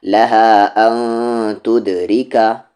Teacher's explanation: را کی آواز نیچے جا رہی ہے، لائٹ ہوگی